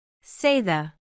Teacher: Notice that your throat vibrates slightly as you make the TH sound, it is voiced.